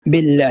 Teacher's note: لام سے پہلے زیر ہونے کی وجہ سے یہاں پر لام ہمارا باریک ہو جائے گا، ترقیق کے ساتھ پڑھا جائے گا، باریک ہو جائے گا باللہ، اس کو باللہ نہیں پڑھیں گے، اس کو باللہ پڑھیں گے باللہ۔